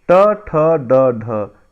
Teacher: मूर्धन्य जिसका उच्चारण मूर्धा से होता है